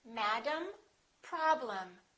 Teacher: the first syllable is stressed and the second syllable is reduced